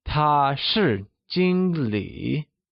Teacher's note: 经 uses the first tone, also known as the high level tone, while 理 uses the third tone, also known as the falling rising tone